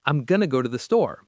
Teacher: So, instead of saying I am going to the store, a native speaker would most likely say, "I'm gonna go to the store." Notice how going to collapses into gonna. It just flows much more smoothly. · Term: reductions